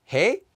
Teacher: Asking questions using casual speech is simple because all you need to do is attach a question mark to the end, and add a regular rising intonation like a question